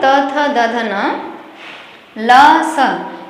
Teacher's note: इनके उच्चारण का स्थान दंत, दंत अर्थात दांत से बोला जाता है। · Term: दंत्याः